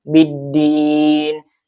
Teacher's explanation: Dibacanya langsung ee diidgamkan ke huruf dal ya biddin. Jadi lamnya tidak terdengar atau tidak ee dibaca ya langsung ke huruf dal. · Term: alif lam syamsiyah